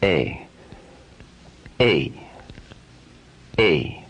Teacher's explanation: a to e when you pronounce the letter a a a when you say a you start with the slightly more open position of uh and you end with a lip spread wider apart in the position of e a a a a the letter a is a dynamic force